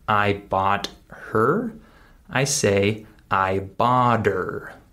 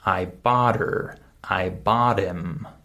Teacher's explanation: I skip the H sound in the word her. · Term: reduced speech